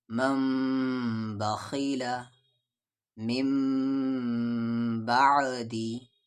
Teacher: نون ساکن کے بعد با ہے، اسے یہاں پر اقلاب ہوگا اور اسے یعنی غنہ اور اخفا کے ساتھ پڑھیں گے